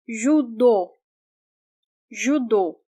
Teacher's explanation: This part is stressed. That's why we do not pronounce O as the vowel U, because it's stressed.